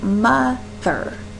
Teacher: Mother, the emphasis is on the first portion of that word. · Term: trochee